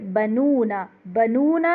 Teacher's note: بنونا میں ناک میں آواز زیادہ نہیں جانی چاہیے